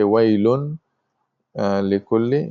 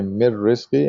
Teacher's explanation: You have to join them together, and there is no gunna anymore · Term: idgham bi ghayr gunna